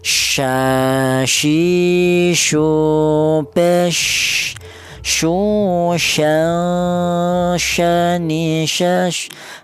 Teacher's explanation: huruf shin ini keluarnya berasal dari tengah lidah.